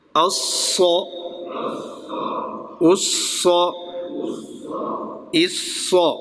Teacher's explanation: صاد میں بھی سیٹی ہے لیکن وہ پر ہوگا